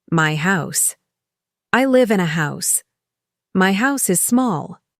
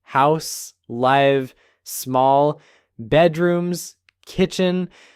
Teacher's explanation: I heard the stress fall on content words. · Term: American rhythm